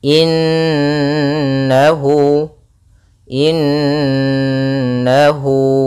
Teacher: huruf mim yang ditasdidkan dan diwarnai dengan warna hijau yang artinya nunnya harus ditahan dulu suara n-nya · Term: gunah